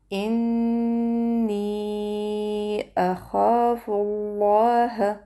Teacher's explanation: پر فا باندې پیش یعنی دما دی، دا به موږ د لام جلاله سره یو ځای کو. دلته به لام جلاله پنډ وایو، غټ به ادا کو. لام جلاله به موږ 2 حرکت بیا کشو. · همزة الوصل چې راغلی دی په مابینځ کې هغه به نه ادا کیږي